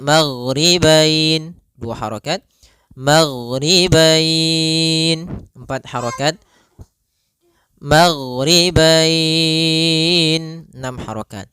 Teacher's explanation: Kita boleh panjangkan dua harakat boleh empat harakat boleh pula En harakat · Disebabkan karena adanya huruf fathah dan huruf bertemu dengan huruf ya sukun atau waw sukun di akhir bacaan. Panjang untuk mad lin sendiri kita boleh panjangkan 2 harokat, boleh 4 harokat, boleh pula 6 harokat.